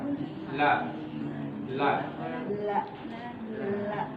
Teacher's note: Ibu rasakan bagian tepi lidah depan sampai ke ujungnya tuh lekat, ya, menempel pada bagian gusi gigi seri depan bagian atas. Lebih naik sedikit lagi dari apa umumnya gigi. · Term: huruf lam